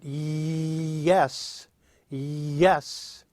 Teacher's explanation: puts the middle of your tongue very close to your soft pallet leaving only a little room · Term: The Y sound